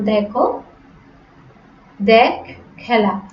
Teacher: বর্তমানের অনুব্যক্ত উচ্চারণে মধ্যম পুরুষের ক্রিয়াপদে এর উচ্চারণ বিবৃত হয়